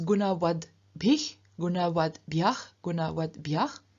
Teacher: the T at the end of the stem becomes voiced too, so turns into a D.